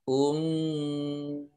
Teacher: nun sukun bertemu dengan huruf za, ini bacaan ikhfa. Ikhfa itu dibaca samar-samar